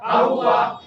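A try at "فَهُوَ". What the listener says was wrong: ফায়ের মাখরাজে নিতে হবে ফাহুয়া যদি আমরা ফা দুই ঠোঁট দিয়ে বলি দুই ঠোঁট দিয়েও ফা হয় কিন্তু ফায়ের মাখরাজে যায় না ফা যদি বলি তাহলে হবে সহি হবে না ফাহুয়া ফা ফাহুয়া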